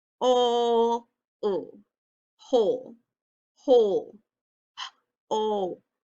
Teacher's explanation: I hear O. O is saying its own name, which means it's a long O.